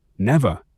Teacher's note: is two syllables with the stress on the first